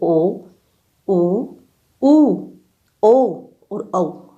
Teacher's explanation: देखो, वृतामुखी स्वर यानी नाम से ही विदित है, बोलते समय होठ की आकृति वृत्त के समान गोल हो जाती है। इन स्वरों के उच्चारण में होठों का आकार गोल हो जाता है